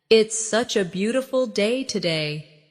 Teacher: Stress beautiful to express the feeling.